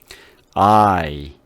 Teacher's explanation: 이렇게 아에서 이 소리를 동시에 내는 거예요. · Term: 이중모음